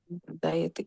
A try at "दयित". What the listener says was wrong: Dayita. You're saying dayati. Dayita.